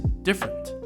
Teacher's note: However, a more natural way to pronounce this word is different. The first E is actually not pronounced. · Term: elision